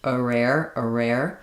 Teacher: this R connects the schwah and the air sounds